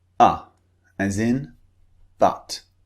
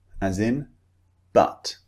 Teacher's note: Notice the shape of my mouth. The position is very relaxed and neutral. Not wide, not open, not rounded, just neutral.